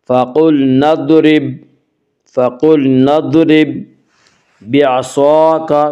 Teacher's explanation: صاد کو پر پڑھیں گے، صاد حروف مستعلیہ میں سے ہے